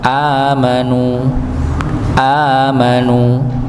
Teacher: dibaca sesuai dengan keluarnya huruf hamzah yaitu di tengkorokan paling dalam atau pangkal tengkorokan